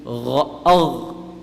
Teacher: the gargling sound we make, that's basically the sound of ghayn. Except there's no water in your mouth. · The makhraj of ghayn and kha. This is the top upper part of the throat.